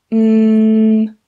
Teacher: I just put my lips together and I just make a noise. And that noise comes out of my nose. This is a nasal sound. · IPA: /m/